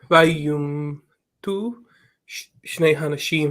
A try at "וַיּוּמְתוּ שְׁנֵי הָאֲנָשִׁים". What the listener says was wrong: So the thing that's missing here, remember yumat is the singular, so the vowel that's missing is yumatu, and so that this shva represents a reduced vocal. It's a reduced vowel. So vayumatu.